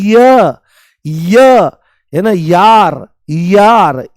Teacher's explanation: अरे यार तो जैसे ही आप य बोलते हो तो य में आप ध्यान से सुनने की कोशिश करो। य बोलते ही इ की ध्वनि आती है। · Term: अर्ध स्वर